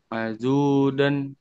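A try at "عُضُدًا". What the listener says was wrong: nggak ada panjang. Nggak ada panjang. Nggak ada panjang. Nggak ada panjang. Nggak ada mad kan?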